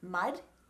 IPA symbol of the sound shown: d